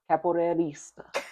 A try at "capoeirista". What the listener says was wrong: You almost had that extra vowel in the middle of that.